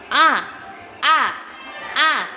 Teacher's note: kita kalau bilang a seperti mangap mulutnya karena dia keluarnya dari tenggorokan yang bagian bawah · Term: hamzah